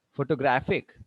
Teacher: The stress is now on the graph.